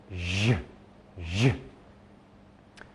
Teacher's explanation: Instead of going shh and using only the air in your mouth, this time you're going to use vibrations from your throat. Put your hand here and you can feel j, j. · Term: j sound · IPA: ʒ